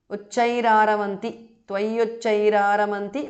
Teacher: because of sandhi visarga changes to repha